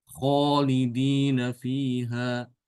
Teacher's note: Jadi alifnya itu ikut otomatis ikut tebal sebagaimana kha gitu.